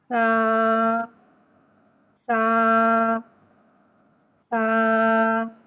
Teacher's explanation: जबान का सर और ऊपर के दांतो के अंदरूनी किनारे से अदा होता है सा में सीठी नहीं आती इसको बगर सीठी के पढ़ते हैं · سا حرف لساویہ ہے۔ سا زبان کا سر اور اوپر کے دانتوں کے اندرونی کنارے سے ادا ہوتا ہے۔ سا میں سیٹی نہیں آتی، اس کو بغیر سیٹی کے پڑھتے ہیں۔